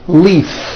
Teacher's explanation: If you stop the voicing at the end of the vowel E, then you would be saying leaf with an unvoiced F. And the word we're trying to say is leave with that voiced V. · the word leaf, like from a tree, which has an unvoiced F. The word is leave with a voiced V.